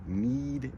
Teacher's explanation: need is in the very front of the mouth, and it is also at the very top of the mouth. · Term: anchor sounds